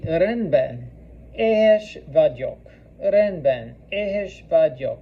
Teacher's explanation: So we've got that elongated E again with the short E. And then this S, since there's no Z attached, it is that sh sound. So S by itself has a sh.